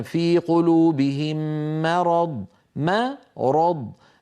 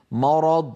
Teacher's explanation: يصح ان يقول القائل مرض فيفخم الميم تبعا للراء والضاد بعدها عليه ان يرقق الميم وان يفخم الراء والضاد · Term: الميم مرققه